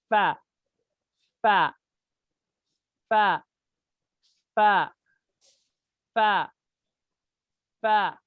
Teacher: ऊपर वाले दो दांतों का सर और नीचे के होंठ का अंदरूनी हिस्सा, इससे फा निकलता है